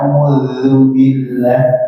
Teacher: A'udzu, ujung lidah Pak. Seperti Zu. kayak digigit sedikit ya.